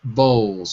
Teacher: So we don't really say the L at the end of the word. We usually drop it.